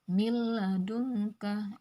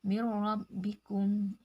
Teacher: memasukkan bacaan nun sukun atau tanwin ke huruf berikutnya tanpa disertai dengung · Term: idgam bilagunnah